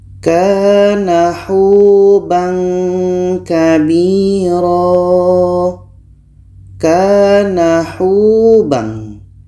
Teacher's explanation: Huruf 'hu' ini dibaca panjang karena ada sukun wau yang didahului oleh damma. Jadi, 'hu' ini dibaca dua harakat.